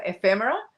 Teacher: I throw the emphasis on F, so ephemera, and then I say them as quick as possible.